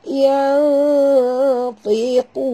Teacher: Okay, nun mati bertemu ta. Kita kena sorokkan bunyi nun ke dalam ta disertai dengung dua harakat ya, ikhfa haqiqi ya, dan tebal ya sahabat.